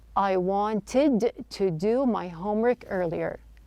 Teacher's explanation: the T sound in the word wanted the t is dropped this is not an uncommon practice when the T follows an N